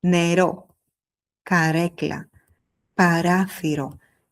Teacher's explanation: Tu n'as pas besoin de faire un très long. En grec moderne le R est souvent bref. Il doit être clair placé à l'avant mais pas forcément exagéré. Donc ne cherche pas à faire un grand effet dramatique.